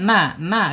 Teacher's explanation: ujung lidahnya menyentuh langit-langit yang depan ya di bawah huruf lam ya